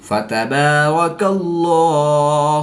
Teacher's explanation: با حروف قلقلہ میں سے ہے اور یہ مشدد ہے تو یہاں پر قلقلہ کبریٰ کر کے پڑھیں گے.